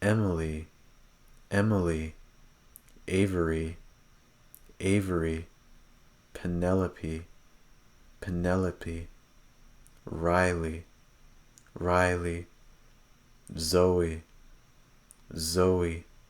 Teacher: A lot of students tend to pronounce it more like or pronounce it too quickly at the end of a word, so make sure that you hold the E sound at the end of these names.